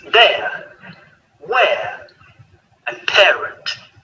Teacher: both the vowels are on the same row, so the mouth doesn't open or close. The main difference is the shape of our lips and the origin of our sound in our throat, starting on the e and finishing on the air.